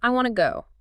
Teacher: You'd probably say, I want to go. You still maintain the schwa reduction on the word to, but you avoid the full wanna blend.